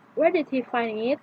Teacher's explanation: the voice is falling to a lower pitch at the end